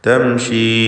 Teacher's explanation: 4-5 ഹറക്കത്തിൻ്റെ അളവിൽ ആ യാഇനെ ദീർഘിപ്പിക്കൽ അനുവദനീയമാണ് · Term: മദ് മുൻഫസിൽ ജായിസ്